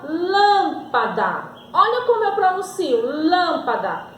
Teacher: a minha sílaba mais forte é a antepenúltima então eu digo que era uma palavra proparoxítona